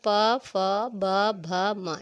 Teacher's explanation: प बोलेंगे तो प टच होगा हमारे दोनों होठ, और फ बोले तो फ ब भ, ये होठ टच हुआ। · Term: प वर्ग